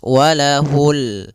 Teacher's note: Pada lafal ini ada bacaan alif lam qamariyah, yaitu alif lam yang ditulis dan dibaca, yaitu suara lamnya terbaca dengan jelas